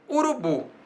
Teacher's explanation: Urubu tem a sílaba tônica bu.